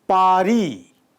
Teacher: ri comes after a voice sound, as in pari, where a is voice.